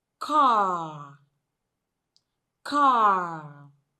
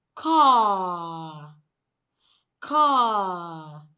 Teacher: The word car is just 2 sounds, k and ah, k and ah. So when you blend them together, you have the word car. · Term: long R sound